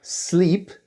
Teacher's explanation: the L becomes a little devoiced